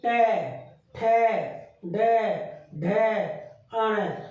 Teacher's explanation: पहले तो जीभ ऊपर जाएगी और उसके बाद नीचे आएगी तालू में लग के। अण, अण, पहले ऊपर लगी बीचम बीच, फिर नीचे आई। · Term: मुर्दा